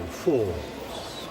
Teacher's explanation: Tighten the top of your mouth, and when you get to the word falls, just linger over the vowel